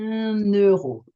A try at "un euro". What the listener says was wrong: You're still pausing. Try put an N between.